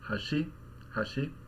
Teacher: both of them are pronounced with this low high pattern by themselves